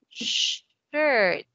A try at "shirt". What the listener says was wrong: Oh, no. It's not skirt. Shirt. Shirt. Shirt.